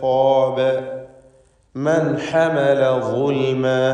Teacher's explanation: മൻ എന്നതിൽ സാക്കിനത്തായ നൂനിനെ ഇൽഹാർ ഹൽക്കി നൽകി മണിക്കാതെ വെളിവാക്കി ഉച്ചരിക്കേണ്ടതാണ്.